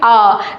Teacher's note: तो हमारा मुंह पूरा खुल जाता है आ बोलते ही। ठीक है, तो बिल्कुल यहाँ पर क्या हो जाएगा, आ जो हमारा स्वर है वो कौन सा है, विवृत स्वर है।